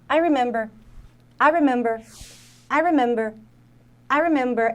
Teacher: É mais forte no I. E esse som de I que tem do I, ele meio que desaparece. Aí a gente junta com remember.